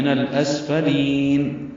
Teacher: نون کو لام سے ملا دیں گے، لام ساکن پہ اظہار، سین ساکن پہ ہمس، فا جلدی سے پڑھیں گے اور لام کو لمبا کریں گے.